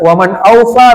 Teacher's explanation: nun sukun bertemu Hamzah izhar dibaca jelas nun sukunnya dengan ada guna.